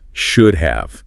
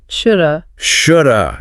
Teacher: Yeah, that L sound just vanishes.